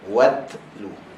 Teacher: ujung lidah bertemu dengan belakang gigi atas. So dalam keadaan ujung lidah kita di belakang gigi atas, maka kita lepaskan angin. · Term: huruf ta